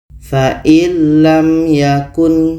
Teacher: Ada mim mati bertemu ya. Ini izhar syafawi, mim jelas, ya jelas dan tidak dengung.